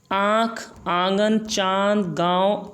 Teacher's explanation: अनुनासिक का उच्चारण करते समय वायु नाक और मुंह दोनों से निकलती है